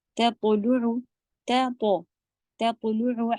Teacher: قلقلہ بھی ہوگا اور تا پہلا سیدھا رہے گا دوسرا ہیوی